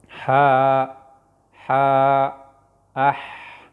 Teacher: دا د مرۍ د منځنۍ حصې نه ادا کېږي